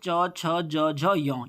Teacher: च, छ, ज, झ, य, ये तालव्य ध्वनियाँ होती हैं